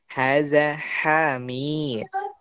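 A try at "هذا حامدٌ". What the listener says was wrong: Bukan seperti itu. Hamidun. Bukan Hamid. Seperti yang kita sebutkan sebelumnya, kalau kita dalam masa pembelajaran ini usahakan harokat ini dibaca.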